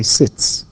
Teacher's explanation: sit. T is voiceless. So I say sits.